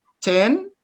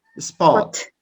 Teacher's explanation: So it means that one ta is aspirated and the other ta is not aspirated. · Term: aspiration